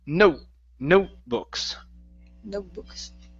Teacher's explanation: we need to fake that T it's going to be a stop T